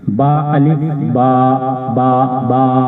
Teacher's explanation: आ जो अलिफ की आवाज है वो मुंह के खाली हिस्से से अदा होगी।